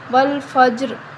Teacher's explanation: وقف کی صورت میں والفجر، والفجر. اب جیم پر قلقلہ کریں گے اور را کے نیچے زیر ہے تو ہم را کو باریک پڑھیں گے